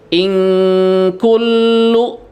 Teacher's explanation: Jadi bunyinya kalau nun mati ketemu dengan kaf atau dengan kof itu ing ya. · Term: ikhfa ab'ad